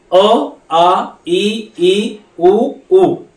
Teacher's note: स्वरांचं उच्चारण करताना आपले जीभ मुखातील कुठल्याही अवयवाला त्याचा स्पर्श होत नाही. अ आ ई उ उ अशा प्रकारे.